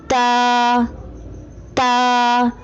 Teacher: تا کی ادائیگی میں زبان کی نوک کو سامنے والے اوپر کے دو دانتوں کی جڑ سے لگا کر باریک آواز میں پڑھیں